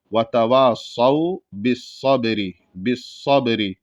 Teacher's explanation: صاد ہے موٹا ہوگا، صاد کے بعد واو ساکن ہے، اس وجہ سے یہاں پر کھینچ کے پڑھیں گے ایک الف کے برابر